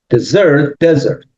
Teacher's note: But then we have the word desert, which is exactly the same spelling and the same word, but it's not desert, it's desert. So the stress is in the first syllable, and that means Sahara